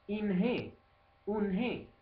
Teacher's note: sempre con e finale nasalizzata